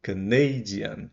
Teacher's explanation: é o NEI que fica forte, e não mais a primeira sílaba